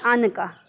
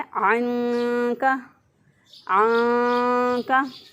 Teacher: इख्फा नहीं करते, नून की आवाज़ को छुपाते नहीं है बल्कि इसको पढ़ देते हैं